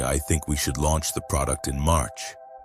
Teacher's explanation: The habit of ending statements with a rising intonation that makes them sound like questions. When you say, "I think we should launch the product in March," with a questioning tone, you're essentially asking for permission to have that opinion. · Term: uptalk